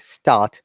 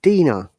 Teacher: start, there is R. We don't pronounce it.